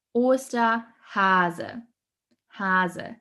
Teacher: Hase has a soft S sound, so it's mostly, it's kind of pronounced like a Z sound in English. Hase. And also for our native English speakers, don't forget to pronounce the E at the end.